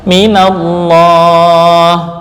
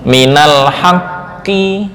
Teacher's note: min ketika disandarkan ke isim, maka nun yang asalnya sukun diberikan harakat penolong berupa fathah